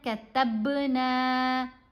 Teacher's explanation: با کو ہلا کر پڑھنا ہے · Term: کلکلا